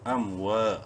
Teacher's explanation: الف مدہ ہے، واو کو ایک الف کے برابر لمبا کریں گے۔